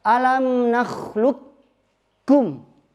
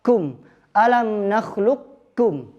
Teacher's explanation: Gimana idgham kamil? Kita tidak baca qafnya, langsung ke kaf.